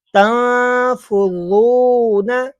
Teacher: زو نہیں کرنا بھائی، زو سیٹی نہیں لے کے آنی